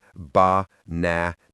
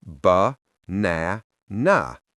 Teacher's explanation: The first and last a become schwas. They are weak. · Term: schwa sound